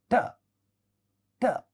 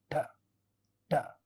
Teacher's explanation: What we mean by retroflex sound is the tongue curls inside our mouth, that is the front tip of the tongue curls and it hits the upper teeth area, the teeth ridge area towards the upper teeth, and that's how we produce retroflex sound.